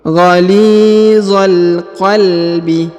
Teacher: huruf za langsung sambung masuk ke huruf lam yang berharokat sukun.